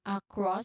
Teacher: there's a neutral uh sound at the beginning. You followed by stress on cross which has a short o sound as in hot and and there's also an s sound of course at the end.